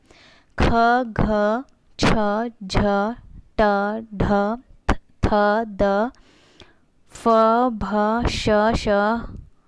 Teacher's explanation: इसे बोलने में आपके मुंह से वायु भी निकल रही है और हकार की ध्वनि भी निकल रही है, इसलिए इसे महाप्राण वर्ण कहेंगे।